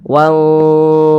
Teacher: Sebelumnya ini ada tanda baca dhammah. Nah, maka huruf ra-nya ini dibaca tebal, dibaca tabkhim begitu. Sehingga pangkal lisan kita naik terangkat ke atas.